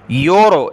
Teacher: اس را کو موٹا پڑھنا ہے، کلرفل ہے اور اس سے پہلے والے حرف پر پیش ہے